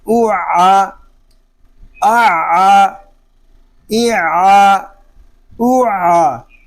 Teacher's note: عین حلق کے درمیان والے حصے سے ادا ہوگا، اور عین کو ادا کرتے وقت حلق تھوڑا سا گھومے گا۔ حمزہ عین پیش اوع، عین زبر آ اوعا اعا ایعا اوعا۔